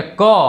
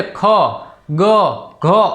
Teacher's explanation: કારણ કે કંઠમાંથી ઉત્પન્ન થાય છે. તમે એ વ્યંજન બોલશો તો ગળામાંથી તેનો ઉચ્ચાર થશે. જેમ કે ક, તો તમારા ગળામાંથી ક ઉત્પન્ન થશે. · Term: કંઠ્ય વર્ગ